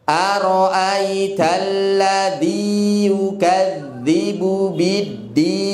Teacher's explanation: Aro'aital ladzi, tadi ronya pendek, dinya 2 harokat, yukadzibu biddin, ad-din, alif lam syamsiah, din, ya panjang, mat arid li sukun, ya, mat arid li sukun itu usahakan panjang